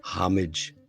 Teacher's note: Homage. Now, this is one of those H words where the H is so silent, you might as well not even have it there